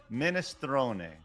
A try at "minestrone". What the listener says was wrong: Excuse me. There's no there's no I-E in it. Minestrone? That's not, no. Minestrone. Think, like you're Canadian. Minestrone.